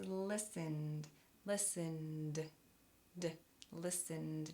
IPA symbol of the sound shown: d